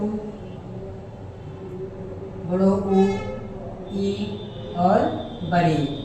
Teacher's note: मुख द्वार लगभग बंद रहता है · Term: संवृत